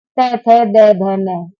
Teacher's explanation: त त का उच्चारण हम दंत से करते हैं